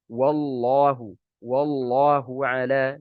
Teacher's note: waw dibaca dengan tafkhim ketika bersambung dengan huruf yang tebal, dan ini bukan hanya waw saja ya, semua huruf yang kalau dia bersanding dengan huruf yang tebal ini khawatir untuk dia ikut tebal.